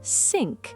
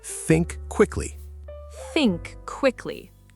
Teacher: The key sound is th at the start. In English, you put your tongue between your teeth. Think, not sink.